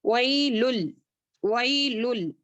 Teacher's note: लुल को क्या करेंगे लाम टू लाम अच्छे से मर्ज करेंगे